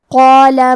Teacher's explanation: قاف کی ادائیگی زبان کے جڑ اور تالوں کے نرم حصے سے ہے. قاف حروف التفخیم میں سے ہے، لہذا ہمیں قاف کو موٹی آواز میں پڑھنا ہے کیونکہ اس کے بعد مد الف ہے.